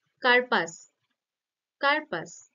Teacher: ক টার উপরে শ্বাসাঘাতটা ঘটছে ফলে এই রটার উপর শ্বাসাঘাতটা কমে যাচ্ছে তো এই র টা কি হচ্ছে না দুর্বল হয়ে যাচ্ছে বা